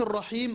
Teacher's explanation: ياء مادية تخرج من الجوف، قبلها مكسور